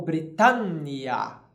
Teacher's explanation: Nós temos uma nasalização a mais em Britannia.